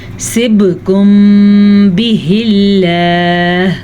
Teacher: لفظ اللہ سے پیچھے زیر ہے تو لفظ اللہ کو ہم باریک پڑھیں گے